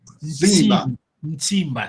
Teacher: O S tem que nasalizar o S.